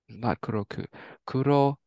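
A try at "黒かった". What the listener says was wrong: Perfect. Yep, kurokata. Yep, exactly.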